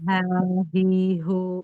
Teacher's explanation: dia dari pangkal tenggorokan bukan dari da dada ya.